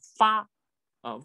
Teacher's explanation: 都是上牙碰下唇，这个发要出口要使劲儿